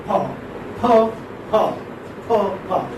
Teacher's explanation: It's a bilabial voiceless plosive or stop.